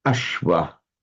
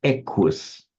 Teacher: where you get a word that has a sh in Sanskrit, that turns up in Greek and Latin as a k sound